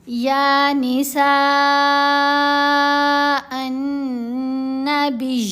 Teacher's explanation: یا کے اوپر کھڑا زبر ہے، 2 حرکات کی مقدار لمبا کرنا ہے. سین کے اوپر مد متصل ہے. · مد متصل کی پڑھنے کی جو مقدار ہے، جو ڈیوریشن ہے لینتھ کا، وہ کتنا ہے؟ 5 سیکنڈ، یعنی 5 حرکات کی مقدار لمبا کرنا ہے